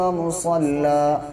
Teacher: دو زبر ہیں، اگر الف نہیں بھی لگا ہوگا تب بھی جب رکیں گے تو مسلن سے مصلى پڑھا جائے گا